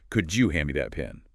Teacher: The D and Y sounds blend into a J sound.